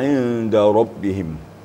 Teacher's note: Syiddah artinya suara terputus waktu membaca ba. Tertahan ya, suara tertahan.